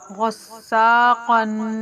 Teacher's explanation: ان تینوں حرف کے اوپر تنوین ہونے کی وجہ سے جوڑ کرتے وقت غنہ کریں گے، ایک الف کے برابر رک کر، غصاقن۔ تنوین کی آواز ناک میں جاتی ہے